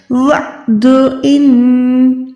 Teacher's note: یہاں پر عین ہے، یعنی حلق کے بیچ تک، جہاں پر ہڈی ہے آواز کو وہاں تک لے جائیں، پروپر عین کو ادا کریں، نہ کہ الف کو۔